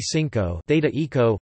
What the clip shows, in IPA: ˈθiŋko